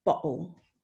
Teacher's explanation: the glottal stop is the sound that is in the middle of the word bottle